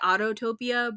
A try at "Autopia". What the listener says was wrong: because there's only one T. There's not two T's,